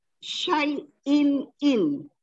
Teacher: Di situ tanwin berjumpa dengan hamzah dan hukumnya adalah izhar, dibaca dengan nyata dan jelas tanpa dengung